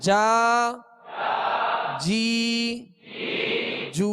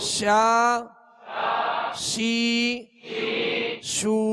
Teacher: یعنی درمیانے زبان درمیانے تالو سے جیم شین یا یہ تینوں حروف ادا ہوتے ہیں۔ اگر ان کا اہتمام نہ کیا جائے، صحیح مشق نہ کی جائے تو جیم کی آواز یا بن جاتی ہے، یا کی آواز جا بن جاتی ہے۔